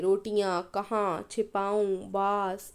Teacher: अब जरा इन शब्दों पर ध्यान दीजिए, रोटियां, कहाँ, छिपाऊं, बास आदि। इन शब्दों का उच्चारण नाक व मुंह दोनों से किया जाता है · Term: अनुनासिक शब्द